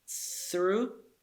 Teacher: Through, th is voiceless, dental sound, th as in thin.